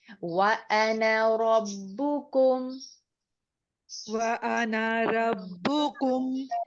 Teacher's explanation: یہ لفظ انا کو آپ دیکھیے اس کے ساتھ زبر کے بعد الف آ رہا ہے، لیکن یہ الف نہیں پڑھا جائے گا، ہم اس نون کو جلدی ادا کریں گے